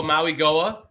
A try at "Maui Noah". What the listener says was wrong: Maui Noah. I think it's an N instead of a G sound.